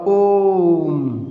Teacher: ओम, यानी कि बहुत दीर्घ उच्चारण ओ का कर दिया जाता है, जिसके कारण उसे कहा जाता है प्लुत स्वर कहा जाता है।